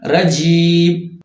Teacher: تو یہ تینوں حروف مدہ کہلاتے ہیں، یعنی الف مدہ، واو مدہ اور یا مدہ. اور ان تینوں کا مخرج ہے منہ کا خالی حصہ یا جوف دہن